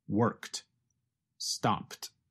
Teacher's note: ends in a voiceless consonant, like the letters K and P.